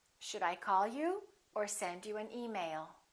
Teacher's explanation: rising and falling intonation is also used when you're giving someone a choice